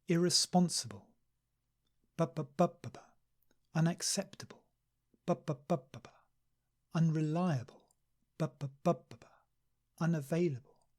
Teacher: so we have a little stress on the first syllable and the main stress on the third syllable